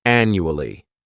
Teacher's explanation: This word has four syllables and the stress is on that first syllable. The second syllable, it's like you're just saying that letter U.